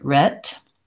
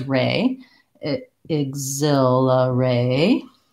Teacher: in American English, it's a diphthong. It glides from A to I. Mainly if I think about holding it longer, staying tense on it, A, and then closing and relaxing a little bit, I'll say it correctly.